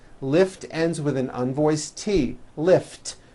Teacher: lift ends with an unvoiced T